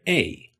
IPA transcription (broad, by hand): ei